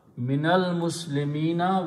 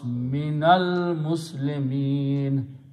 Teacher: when you stop, you don't pronounce Fata on the last letter, you pronounce Minal Muslimin.